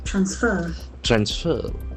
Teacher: If you use it as a verb, the accent falls on the second syllable.